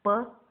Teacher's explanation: П болып естіліп жатыр. Б-ға ұқсас П дыбысы, ол қатаң, тек қана салдардан тұрады.